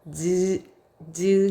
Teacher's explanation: 볼까요 얘들아 즈 즈 해보고 즈 해 보세요 즈 할 때요 혓바닥이 위에 입천장이 닿거든 바로 거기서 나는 소리를 입천장 즉 구개음 이다라고 해요